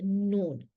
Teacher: खैशूम से आवाज निकालते हुए यानी कि नाक से आवाज निकालते हुए जब जुबान का किनारा सनाया, रुबाई और अन्याब के मसूड़ों से लगे तो उससे नून निकलता है। अब देखिए यहाँ पे दवाहिक का इस्तेमाल नहीं हुआ, बस सनाया, रुबाई और अन्याब, इनसे इनसे लगे, इनके मसूड़ों से लगे तो नून निकलता है।